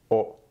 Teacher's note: So you want to keep your O nice and short with your mouth kind of rounded. O. The sound really happens close to the front of your mouth.